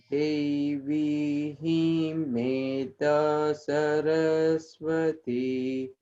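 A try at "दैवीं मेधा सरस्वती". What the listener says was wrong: Only thing to watch out here is in the first word, make sure that instead of pronouncing it like Devim, we pronounce it like Daivim. That's an AI, that's an I sound, Daivim. So we're used to seeing Devi, but here it's actually Daivim. Daivim Medha Saraswati.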